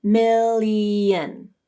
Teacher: If you say this word slowly, you will hear a small E sound as you transition from mill to yin. Million. Now speed it up to get rid of the E.